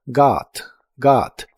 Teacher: La o de esta palabra se pronuncia como una a profunda